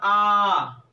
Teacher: जैसे बड़ा आ आपने जब कहा तो आपका पूरा मुंह खुलता है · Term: विवृत स्वर